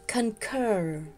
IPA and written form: kən'kɜr (CONCUR)